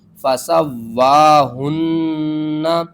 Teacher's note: زبر وا، فسوا، ہا نون پیش ہن، نون زبر نا، فسواہن، ہا کو آپ نے حل کے سب سے نیچے والے حصے سے ادا کرنا ہے، آواز بھاری آئے گی ، نون کے اوپر تشدید ہے، 2 بار پڑھیں گے اور